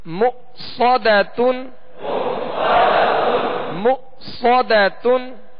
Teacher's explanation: صاد کی زبر پڑھیں گے تو اس میں ہونٹ گول نہیں کریں گے، ہونٹ گول کیے بغیر اسے پر پڑھنا ہے